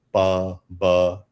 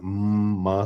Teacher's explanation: produced with the nasal airflow, where the velum goes down and the air comes out from the nose